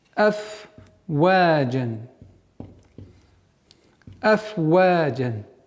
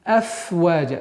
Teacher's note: Так как данная ситуация, буква «фа» – фрикативный звук, то есть при произношении струя воздуха должна продолжительно свое действие влиять на произношение. «Афваджа». Нельзя его скоростечно произнести быстро «афваджа», чтобы она не переходила в другой звук.